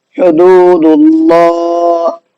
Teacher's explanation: تو یہاں پر بھی دیکھیے اللہ کے نام سے پہلے دال پر پیش ہے، ہم نے اس پیش کی وجہ سے اللہ کے نام کو منہ بھر کے پڑھا ہے